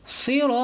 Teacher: ro-nya panjang, ya, dan ro-nya dibaca tafhim nih, tebal, karena sini harokatnya fathah, ya.